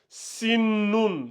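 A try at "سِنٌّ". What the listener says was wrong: Sinnun. Il y a la shadda là. Il faut appuyer un peu. Il faut respecter la shadda.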